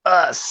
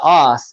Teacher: a lot of central Europeans instead of doing the uh sound with the pressure from the stomach it's more of a of a ah sound